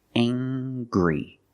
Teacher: We use the nasal sound, plus the hard G.